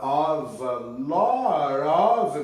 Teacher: Agora aqui embaixo, ó, a crowd is a concentration of, esse F tem som de V, nós vamos juntar com A